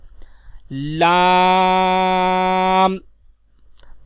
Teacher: لام کا مخرج ہے زبان کا کنارہ اور ضواحک سے ثنایا تک کے مسوڑوں سے ادا ہوتا ہے